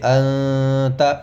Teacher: خیشوم میں آواز جائے گی، جو ناک کا باسا ہے اس میں آواز کو لے جا کر پڑھیں گے، اس طریقے پر کہ نہ تو ادغام ہو اور نہ ہی اظہار ہو، ان کے بیچ کے درمیان کی جو چیز ہے اخفاء، اس کو ادا کیا جائے گا، نہ ادغام مع الغنہ ہونا چاہیے۔